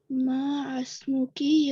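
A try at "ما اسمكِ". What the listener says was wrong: माँ मसमूकी। इसको माँ अलग नहीं पढ़ेंगे, मसमूकी, माँ मसमूकी। देखिए अलिफ, अलिफ खाली है ना, एम्प्टी है, उसको नहीं पढ़ेंगे। जो एम्प्टी होता है उसको नहीं पढ़ते हैं। यहाँ पर भी मसमू एम्प्टी था यहाँ पे।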